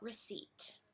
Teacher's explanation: there's no P sound in it that's right folks the P is silent